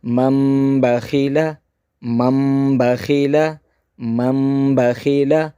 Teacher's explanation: نون ساکن یا تنوین کو میم سے بدل کر پڑھیں گے۔ · اس نون ساکن کی آواز نہیں آئے گی، بلکہ اس میم کو اس چھوٹی سی میم کے ساتھ ہم ملا کر پڑھیں گے